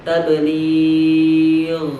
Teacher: Jadi ada ketika sukun, dalam kondisi sukun tidak terlalu mengalir dan tidak terlalu menghambat. Kalau untuk huruf gha ini mengalir suaranya dalam kondisi sukun. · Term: rokhawah